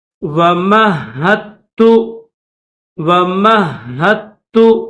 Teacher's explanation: ہا کے بعد دال چھوڑ دیں گے، دال کو چھوڑ کر تا کو پڑھیں گے، کیونکہ دال کے اوپر جزم ہے، اور اگر جزم والا حرف آ جائے اور اس کے بعد تشدید والا حرف آ جائے تو جزم والے حرف کو چھوڑ کر تشدید والا حرف پڑھا جاتا ہے، تو یہاں پر دال نہیں پڑھیں گے، ہا کے بعد ڈائریکٹ تا کی آواز نکالنی ہے۔